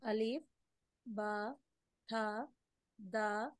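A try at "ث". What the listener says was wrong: సా సా అలిఫ్ బా తా సా సా. రెండిటి మధ్యలో వస్తాయి. తా కాదు, దా కాదు, అది సా సా. టీహెచ్ ఒక విధంగా రావాలి.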